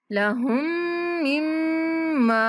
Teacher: دونوں میم مشدد ہیں تو دونوں پر غنہ کرتے ہوئے ہم نے دوسرے میم کو تھوڑا کھینچنا ہے